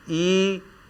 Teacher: इसमें स्वर जो है वह तालु के पास से बाहर निकल रही है तो इन्हें तालव्य कहते हैं।